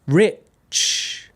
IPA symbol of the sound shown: tʃ